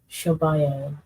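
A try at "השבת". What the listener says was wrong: So it'd be like, so it'd be Hashab Ya'aya. So it's not Hashaba, it would be Hashab and then Ya'aya. Khan, Hashab Ya'aya.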